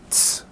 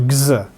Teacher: They like to have a certain similarity when the two consonants are together. So t is a voiceless sound, made without vibrating your vocal cords, and s is as well. g is voiced made, with vibration in the vocal cords, and z is as well. And it's very difficult to like, in like a split second, start voicing and stop voicing in order to make these different.